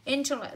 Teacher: Intellect rơi vào âm tiết đầu